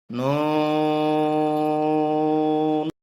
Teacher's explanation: চার আলিফ টানতে হবে জিব্র আগার তালুতে লাগবে